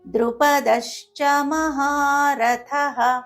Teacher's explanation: పొరపాటున ధ అనే పలికే అవకాశాలు ఎక్కువగా ఉంటాయి కాబట్టి థ అనే పలకాలి